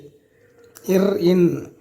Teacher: இர், இன் ஆகிய இரு மெய்களும் மேல்வாய் நாக்கின் நுனி மிகவும் பொருந்துவதால் பிறக்கின்றது.